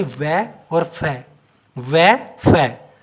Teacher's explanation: हमारे जो दांत है ना होठों से लगे हैं, हमारे दांत होठों से लगे हैं, जैसे वै और फै, वै फै। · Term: दंत ओष्ठ